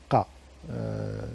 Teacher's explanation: C'est une espèce de K qui se prononce plus en arrière dans la bouche que le K. · cette consonne est une uvulaire, une occlusive uvulaire, c'est le son Ka, ça se prononce Ka.